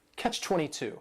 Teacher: It's a compound noun. The word catch is just 1 syllable, and then 22 is 3 syllables, and the stress is on that final syllable.